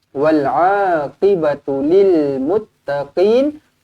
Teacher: Qaf di sini pastikan kita tekankanlah. Jangan nipis sangat.